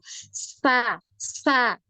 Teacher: di antara gigi atas dengan gigi bawah ini kerasa suara itu keluar dari situ